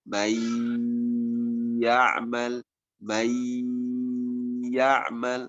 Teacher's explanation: Hanya nun sukun berubah menjadi ya, kemudian ditahan bunyinya.